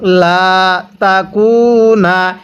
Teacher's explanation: এই লামের মধ্যে আমরা এক আলিফ টান দিব, কারণ জবরের পরে এরকম খালি আলিফ থাকলে সেখানে আমাদের এক আলিফ টেনে পড়তে হয়